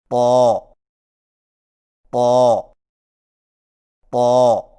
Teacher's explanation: طا کی ادائیگی میں زبان کی نوک کو ثنایا علیہ کی جڑ سے لگا کر اور زبان کے پچھلے حصے کو تالو کی طرف بلند کرتے ہوئے موٹی آواز میں پڑھیں، یعنی طا طا طا.